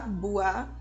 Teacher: o som mais forte ainda é do som da vogal A, enquanto a U tem um som mais apagado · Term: semivogal